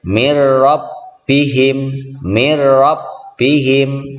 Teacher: suara nun mati ini kita leburkan ke huruf ro menjadi mirrabbihim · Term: idgham bila gunnah